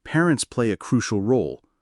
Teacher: Here I stressed crucial to highlight the key idea. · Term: sentence stress